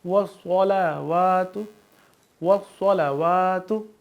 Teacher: صاد حروف مستعلیہ ہے تو اس کو ہم پر یعنی تھوڑا موٹا پڑھیں گے